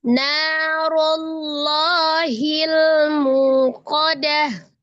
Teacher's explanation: Rullah ada ro berharakat dhamma dibaca tebal. Kemudian lafaz jalalahnya juga tebal karena sebelumnya dhamma. Lanya mad. Narullahi ketemu dengan alif lam komariah dibaca izhar komari disukunkan ke lamnya narullahil.